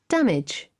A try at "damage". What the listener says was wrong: Damage. No es ch. No es como Chile. Es de y. De giant.